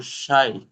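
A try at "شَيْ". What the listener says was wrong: এটা তো লিন বলছেন আপনি। বলছি এটা আপনি লিনের হরফ বলছে, ইয়া লিনের হরফ বলছেন, কিন্তু ওয়াও লিনের হরফ কিভাবে উচ্চারণ হয় সেটা বলেন।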